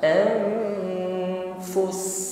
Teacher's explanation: Wa ma tahwal anfus, nun sukun persiapkan pada pengucapan huruf fa, anfus. Fus di sini pendek saja, ya. Langsung menekan pada huruf sin, ya. Karena sin di akhir ayat menjadi sukun, maka yang dominan adalah shafir desisnya, ya, dengan hamas nafas yang mengalir.